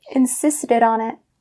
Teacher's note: So these three words have to be just one as the way they're pronounced. So instead of saying insisted and then on it, you're saying insisted on it.